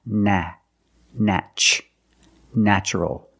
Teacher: The first syllable is pronounced with a short A, like black cat.